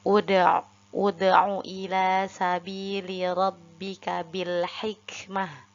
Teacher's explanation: Karena ada hamzah wasol, lalu huruf ketiganya yaitu huruf ain dengan berharokat domah, maka hamzah wasolnya kita baca dengan harokat domah juga.